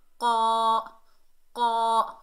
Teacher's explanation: اوپر زبر، آگے الف خالی ہے، یہ الف مدہ ہے، اور قاف حروف استعلا میں سے ہے، موٹا ادا ہوگا ، قا، قا، حروف استعلا 7 ہیں، خا، صاد، ضاد، غین،